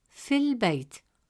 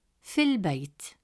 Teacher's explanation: The alif is skipped and the sound transitions smoothly from fi to al-Bayt, fil Bayt. Notice how Hamzat al-Wasl simplifies pronunciation and ensures fluency in speech.